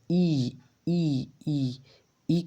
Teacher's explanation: चलो आगे देखो ई ई ई ई का उच्चारण स्थान क्या है? ई उच्चारित करो तो ई का उच्चारण स्थान तालू आ रहा है